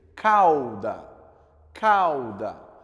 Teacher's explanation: Vocês vão ver que o A ele é mais forte do que o U na hora de construir.